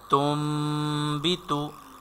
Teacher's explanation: we will change noon, sakin, and tanween into meem, and we will do ghunna. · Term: iqlab